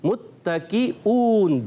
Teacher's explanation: मुत्तकीउन में ता को बारीक रखना है